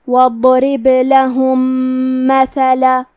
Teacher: یہاں حکم ہے ادغام متماثلین صغیر، اور ادغام کا معنی ہے حرف کو حرف میں داخل کرنا. تو ہم پہلے میم کو دوسرے میم میں ملا کے ایک ہی میم غنہ اور تشدید کے ساتھ پڑھیں گے